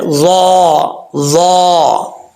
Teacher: ضا جو ہے بغیر سیٹی کے پڑھا جاتا ہے